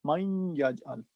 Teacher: نون کی آواز یا میں جانی ہے، یہ ادغام ناقص ہے